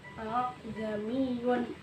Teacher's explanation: Selanjutnya pada lafaz a'jamiyun itu merupakan huruf yang disebut dengan tashil. Cara bacanya kita meringankan hamzahnya